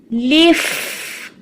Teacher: فا کی آواز کو محسوس کریں، اچھی سی چلتی ہوئی سنائی دے رہی ہے، اسی طرح فا کو نمایاں کرنا ہے لیف۔